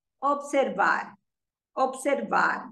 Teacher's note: when you say the word observar, you put the stress on the last syllable.